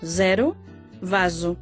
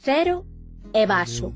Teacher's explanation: O S simple e o Z son tamén sonoros en portugués, zero, vaso, fronte ao galego, cero e vaso.